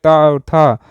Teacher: त वर्ग में के त और थ अघोष वर्ण है